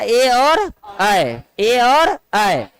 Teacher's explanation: दो जगह से उच्चारण होने वाले। यानी कंठ तालव्य स्वर।